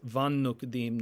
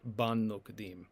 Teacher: This is the softer fricative sound when b becomes v or when p becomes f. So it becomes spirant if there is a juncture but it is pllosive if there is a separation that is to say a disjunctive accent.